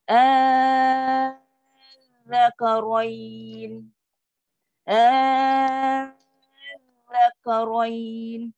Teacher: Sebab zal, hujung lidah lembut. Suara kita akan naik. Sebab dia adalah sabdu. Sabdu kan huruf double. · Ingat zal bukan zai, bukan keras. Sebab zal, hujung lidah lembut. · Dah buat 6 harakat hamzah, baru masuk kat zal. Ingat zal bukan zai, bukan keras.